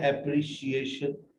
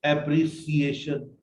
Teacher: बट जब आप एप्रिसिएशन बोलते हैं तो वाहे आप इसको चेंज कर देते हैं एप्री, not, जबकि ये है एप्रिशिएशन, नॉट एप्रिसिएशन। नो सा साउंड इज देयर, शा साउंड इज देयर